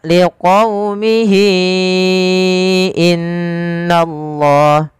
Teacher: Mad yang terjadiebabkan adanya ha damir bertemu dengan huruf hamzah setelahnya panjang untuk Mad Silah thawilah sendiri yaitu kita panjangkan empat harakat